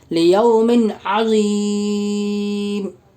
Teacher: میم کے نیچے 2 زیر کی تنوین ہے، 2 زیر کی تنوین کے بعد حروف حلقی کے 6 حرفوں میں سے عین ہے، اس لیے 2 زیر کی تنوین کا عین میں اظہار کا حلقی ہوگا، یعنی بغیر غنہ اور اخفاء کے